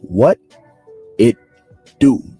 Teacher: The pronunciation would be what it do. Remember, sometimes in the American accent, the T itself is flapped around into a D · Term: flap T sound